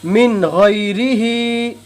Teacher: نون ساکن کو ظاہر کر کے بلا غنہ جلدی پڑھیں گے